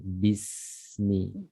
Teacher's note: Salah satu sifatnya itu dia namanya hams, ada aliran napas, kemudian ar-rakhawah, dia juga suara juga mengalir, bismi. Jadi jangan dibaca bismillah ditekan, melainkan dia mengalir, ya.